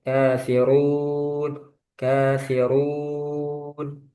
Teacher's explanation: Nah, nanti kafirun itu jangan masuk hidung.